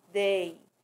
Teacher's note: O E é uma vogal e o I uma semivogal, porque é pronunciada com menos intensidade